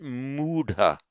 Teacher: We generally find that where a root ends in an ah sound and it's followed by the regular past participle ending ta, the h and the t join together into a d, the retroflex aspirated d, and it lengthens the vowel. So we get mudha.